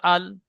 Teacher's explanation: জীভের আগার কিনারা এবং সামনের উপরে দুই পাশের দাঁতের গোড়ার সাথে লাগিয়ে উচ্চারিত হয় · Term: লাম